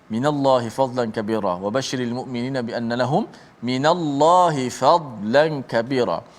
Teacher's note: Tidak ada huruf dad di situ. Dan huruf lam dibaca dengan tarkik nipis.